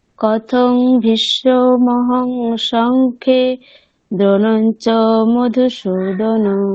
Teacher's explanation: আপনার উচ্চারণে একেবারে ওই আঞ্চলিক যে প্রভাব মানে মাতৃভাষার যে প্রভাব, অকারকে ওকার বলার ব্যাপারটা, সেটা প্রত্যেকটা শব্দের ক্ষেত্রেই হচ্ছে।